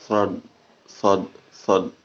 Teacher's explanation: Jadi sod itu pangkal lidahnya naik ke atas karena makhrajul ada di depan, di tengah-tengah mulut, di atas, ya.